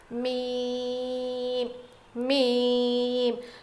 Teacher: میم میم، دونوں ہونٹوں کے سوکھے حصے سے ادا ہوتا ہے.